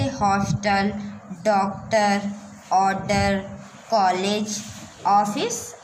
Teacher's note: देखिए विदेशी भाषाओं के शब्दों का आगमन हिंदी भाषा में अपने साथ आ ध्वनि को लेकर आया है। इसका उच्चारण आ और ओ ध्वनि के मध्यवर्ती होता है, यानी बीच में होता है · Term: आगत वर्ण ओ